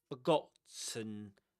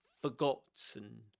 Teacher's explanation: A schwa at the beginning for forgotten. And another schwa at the end.